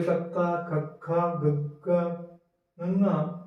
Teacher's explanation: ਠੀਕ ਹੈ, ਤੇ ਇਹਨਾਂ ਦੇ ਉਚਾਰਨ ਵੇਲੇ ਸਾਡੀ ਜਿਹੜੀ ਜੀਭ ਹੈ ਉਹ ਬਿਲਕੁਲ ਸਾਹ ਦੀ ਹਵਾ ਨੂੰ ਕੋਮਲ ਤਾਲੂ ਜਿਹੜਾ ਸਾਡਾ ਹੈ ਉਹਦੇ ਨਾਲ ਲੱਗ ਕੇ ਸਾਹ ਦੀ ਹਵਾ ਨੂੰ ਰੋਕਦੀ ਹੈ। ਤਾਂ ਹੀ ਅਸੀਂ ਇਹਨੂੰ ਕੋਮਲ ਤਾਲੂ ਧੁਨੀਆਂ ਵੀ ਕਹਿ ਦਿੰਦੇ ਆ ਤੇ ਕੰਠੀ ਧੁਨੀਆਂ ਵੀ ਕਹਿ ਦਿੰਦੇ ਆ।